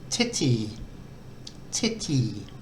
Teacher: the first tea is aspirated and the second one isn't